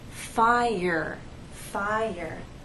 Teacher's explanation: if you listen closely there is the Y sound that connects the two vowels